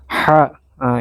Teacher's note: Sementara ha itu kami sebut ha tipis karena hanya sebatas di leher